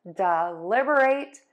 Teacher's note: when you say it quickly, you are going to stress syllable two and syllable four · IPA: /dɪˈlɪbəˌreɪt/